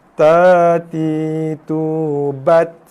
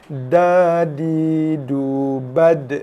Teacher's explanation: Dal dia tak macam huruf ta. Ta ada hembusan nafas yang keluar. Dal tak ada.